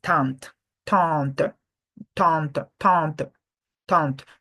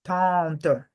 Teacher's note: When after the A, we are not really pronouncing the N. So we just say tant.